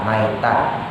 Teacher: Tanya tak marbutoh, kita matiin jadi ha, maitah